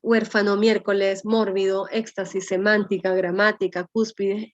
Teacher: la fuerza de voz con tilde incluida está en la antepenúltima sílaba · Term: esdrújulas